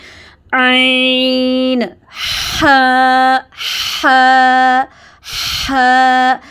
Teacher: گلے کے درمیان سے عین، اس میں تھوڑا زور لگتا ہے، تھوڑا یہ دبا کے ادا کیے جاتے ہیں